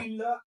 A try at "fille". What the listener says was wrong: হ্যাঁ, এই যে দুইটা এল থাকলে এরকম, দুইটা এল এরকম থাকলে তখন এল এর উচ্চারণ হয় না, ফি।